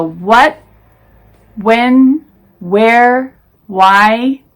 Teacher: Nowadays we pronounce what without the H sound.